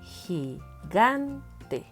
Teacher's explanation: La sílaba tónica está en la penúltima sílaba.